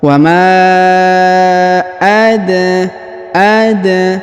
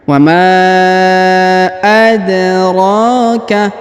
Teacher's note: Perhatikan huruf dal berharokat sukun, maka kita pantulkan atau kita qalqalahkan. Cara bacanya, wa ma ada ya, jadi dipantulkan ya.